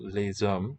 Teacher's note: the vowel e and the s which is voiced as a z sound